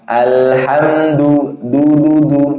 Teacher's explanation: Makhraj ujung lidah tempat keluarnya ujung lidah menempel gigi seri atas. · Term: dal